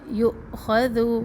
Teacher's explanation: حمزہ میں جھٹکا ہوگا اور سانس نہیں ٹوٹے گی. جھٹکا ہوگا.